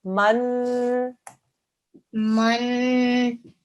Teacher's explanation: It's a noon mashaddad, so we do the 2-second nasal sound.